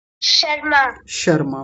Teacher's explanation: जब शर्मा बोलेंगे तो उस समय हमारी जीभ कहां जाकर के लगेगी? शुरू में उसी तालु पर जाकर के लगेगी। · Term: तालव्य शकार